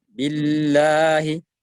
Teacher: Jadi lam dibaca dengan tipis, panjang 2 harakat